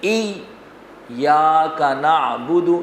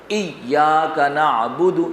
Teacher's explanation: ذرا سختی کے ساتھ ذرا رک کر شد کی ادائیگی ہوگی